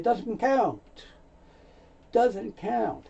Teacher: Very often the T sound is so light you don't hear it. It may not even be spoken.